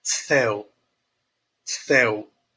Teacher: meus lábios eles se fecham na pronúncia do u de céu